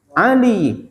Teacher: ada lam berharkat kasrah bergandeng dengan ya mati. Oh, berarti panjang karena ada huruf matnya ya.